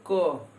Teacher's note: जैसे देख लीजिए, अभी हम बोले क, तो थोड़ी दूर तक बोलिए क, बोल के जाएंगे तो लास्ट में अ आएगा